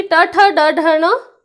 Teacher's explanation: उल्टी होती है। जीभ उल्टी होकर ऊपर टच करती है या ऊपर की तरफ टच करती है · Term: मूर्धन्य व्यंजन